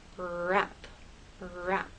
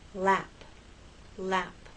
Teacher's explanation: It's like in a small tight ball. The tongue is more tense for wrap, for R, than it is for lap, L.